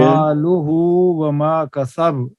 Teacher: ہائے ضمیر کا جو ہے اس کو اس طرح پڑھیں گے کہ جیسے واو مدہ کی آواز آتی ہے، تو اس ضمہ کے ساتھ واو ساکن ملا کر جیسے مالہ وما کسب۔ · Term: صلہ